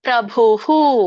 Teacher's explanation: ಕೂಡಿ ಹೇಳಬಹುದು ಗತಿರ್ಭರ್ಥ ಪ್ರಭುಹು ಸೋ ಇಲ್ಲಿ ಅನುಸ್ತಭ ಛಂದಸಿನಲ್ಲಿ ಮಧ್ಯದಲ್ಲಿ ವಿಸರ್ಗ ಬಂದಿರೋದರಿಂದ ನೀವು ಇದನ್ನ ಅಲ್ಪವಾಗಿ ವಿಸರ್ಗ ಉಚ್ಚಾರಣೆ ಮಾಡಿ ಬಟ್ ವಿಸರ್ಗದ ಉಚ್ಚಾರಣೆ ಬರಲೇಬೇಕು